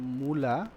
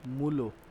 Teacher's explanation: আদি স্বর ঠিক থেকে পরবর্তী স্বর পরিবর্তন হয়ে গেছে, তাকে আমরা বলবো প্রগত স্বরসঙ্গতি